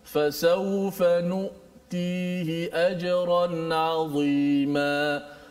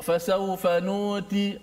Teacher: Suara kita bila menyebut hamzah tu dia tertahan. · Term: huruf syiddah